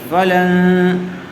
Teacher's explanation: نون ساکن کے بعد حروف اخفاء میں سے تا آیا ہوا ہے، اس لیے غنّے کے ساتھ اخفاء کر کے پڑھیں گے